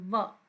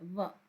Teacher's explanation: बोलते समय होठ नीचे वाला दांत से लगता है